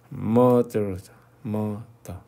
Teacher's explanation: 끝에 알이 있는 거는 혀를 살짝 구부려주면 돼요, 뒤로.